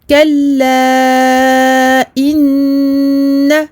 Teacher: Donc noun mushaddada, runna akmal ma takoun. On prolonge la runna de façon très longue. Et je fais la liaison avec le mot d'après.